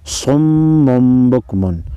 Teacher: تنوین کے بعد اگر میم با آ جائے تو تنوین کے نون کو میم میں بدل کر غنہ کے ساتھ پڑھتے ہیں. علامت کے طور پر یہاں پر چھوٹا سا میم لگا ہوا ہوتا ہے.